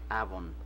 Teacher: se ve un ejemplo de cómo suena B labiodental en el lugar en que nació Shakespeare, que es Avon